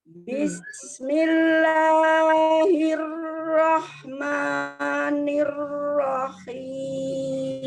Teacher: Jadi takrirnya itu ditahan ya. Ada inhirof. Jadi agak miring ya.